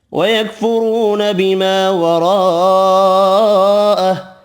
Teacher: را پیش کی وجہ سے پر پڑھیں گے